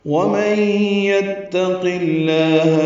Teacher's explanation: قاف کی زیر کی وجہ سے لام اسم جلالہ باریک پڑھیں گے